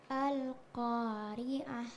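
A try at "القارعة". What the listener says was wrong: Al-Qari'ah. Pastikan bahwa suara yang kita keluarkan itu tebal. Ko. Ko. Al-Qari'ah. Jadi jangan membaca Al-Qari'ah. Ko, itu kesannya jadi huruf kaf.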